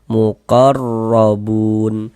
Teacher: maka huruf ro dibaca tabkhim, dibaca tebal, sehingga pangkalisan kita naik terangkat ke atas ketika kita mengucapkannya.